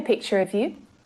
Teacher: usually unstressed, so it sounds like of, not of, with the lazy schwa sound again